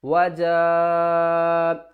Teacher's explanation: بڑی مد ہے، 5 الف کی مقدار کھینچ کر پڑھیں گے